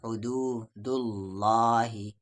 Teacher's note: اللہ کا لام ہے، اس سے پہلے پیش تو اسے ہیوی پڑھیں گے